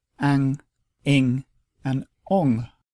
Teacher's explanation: the nigahita is not a separate sound, but it indicates a nasalization of the preceding vowel, and it only joins with short vowels to form ang, ing, and ong, and these usually appear at the end of words.